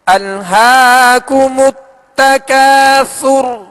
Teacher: تکاثر میں جب را ہم نے ساکن کی تو را کو ہم نے پر پڑھا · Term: را کو پر